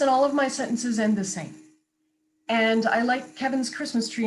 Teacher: falling line sounds like you're reading